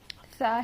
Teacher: سا ہے یہاں پر، سا کو ہم ہلکا پڑھیں گے۔ زبان کی نوک کو اوپر کے دانتوں کے کنارے پر لگانے سے سا ادا ہوتا ہے۔ سا کی آواز میں بالکل سختی نہیں ہوتی، یعنی نرم، بالکل نرمی سے ہم اس کو ادا کرتے ہیں ہلکا۔